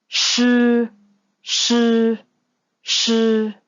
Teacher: when you are pronouncing these sounds, you'll find that your tongue are curled back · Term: Group 5 initials